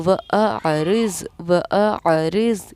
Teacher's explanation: پہلے حمزہ کی آواز آئے اور پھر آئین کی ادائیگی ہو جائے